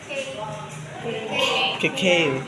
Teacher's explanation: Where the back of the tongue touches the soft palate or velum. Ang velum kay sa pag nasa taas sa O sa taas.